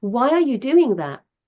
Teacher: my voice went up and then down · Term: inflection